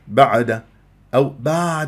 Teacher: ان تنزل الى وسط الحلق وتحس بانزعاج في المخرج وكانه عم تبلع شي وان يجري فيها صوت فتره زمنيه بسيطه لان من احرف التوسط